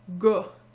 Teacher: Le a ici, vous trouvez peut-être que ça ressemble à un O, GA, Canada. C'est ce qu'on appelle en linguistique le A postérieur labialisé. En fait, au Québec, vous devez savoir qu'on a gardé la distinction entre le A antérieur à l'avant de la bouche, A, et le A postérieur dans le fond de la bouche, A.